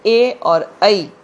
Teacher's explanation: कंठ तालव्य, कंठ और तालु में जीभ के स्पर्श से बोले जाने वाले वर्ण, जैसे ए और ऐ।